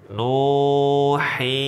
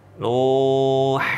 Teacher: ada suara yang keluar dari hidung ya, padahal kita sedang baca huruf mad ya. Nuhiha. Ini namanya al-khonkhonah ya, al-khonkhonah.